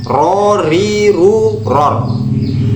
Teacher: Ujung lidah agak ke dalam mengenai gusi gigi depan. Ini makhrajnya huruf ro.